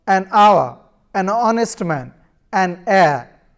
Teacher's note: the words hour, honest, heir begin with a vowel sound, as the initial consonant h is not pronounced